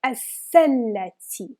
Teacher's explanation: you have a sun letter, it means you will not pronounce lam.